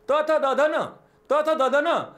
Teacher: त वर्गाचा उच्चार करताना जिभेचा स्पर्श दाताला होतोय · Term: दंत्य